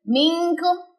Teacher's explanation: نون ساکن کے بعد کاف ہے، اخفاء حقیقی باریک والا اخفاء ہوگا